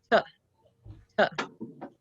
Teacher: The first letter T is a stop. Disrupts airflow. Quick, sharp, staccato.